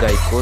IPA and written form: ˈɡaɪkoʊ (GEICO)